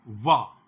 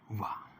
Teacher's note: और वा, यार अलावा वाला वा, ये दंत्योष्ठ ध्वनि में है